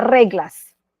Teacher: Y hay ciertas sílabas que no llevan la mayor entonación, es decir, por ejemplo, en la palabra reglas, la mayor fuerza de voz la tengo en la primera sílaba